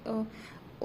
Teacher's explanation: ओ बोलेंगे ना तो कंठ और लिप्स दोनों पे जो है प्रभाव पड़ता है, तो इसको कंठोष्ठ बोलते हैं।